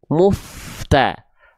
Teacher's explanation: Di sini kan mu-nya dibaca dengan vokal u menjadi mu. Maka pastikan fanya-nya tetap dibaca tipis. Maksudnya gini jangan dibaca muf muf tapi muf.